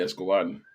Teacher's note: Stresses on the very last syllable. Unless there's an accent on his name, which I don't think there was.